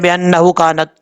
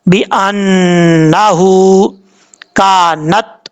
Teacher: ہا کو لانگ کرنا ہے، ایک الف کی مقدار لمبا کرنا ہے